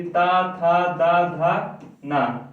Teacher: इसका उच्चारण स्थान कहाँ से है? दंत से। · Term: ता वर्ग